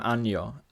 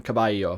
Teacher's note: the palatalization of the Latin double N and L. For example, anno, which we kind of know in the phrase anno domini, means year.